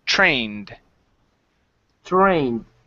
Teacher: this is a long a sound and then our Ed ending which sounds like a d